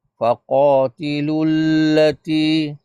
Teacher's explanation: Kerana lam yang seterusnya tu ada tasydid terus masukkan terus huruf huruf lam